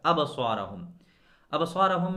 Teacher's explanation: مثال کے طور پر ابصارہم، ابصارہم میں لفظ صاد ہے جو ہمیشہ ہر کنڈیشن میں موٹا ہی ہوتا ہے، پر حروف میں سے ہے خصا ضغط قض، یہ حروف پر ہوتے ہیں۔ تو صاد کے بعد جو الف ہے اس کو ہم آٹومیٹکلی موٹا پڑھیں گے۔